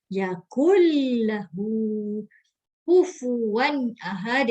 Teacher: suara nun mati dimasukkan ke huruf lam serta tanpa dengung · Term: Idgham bila gunnah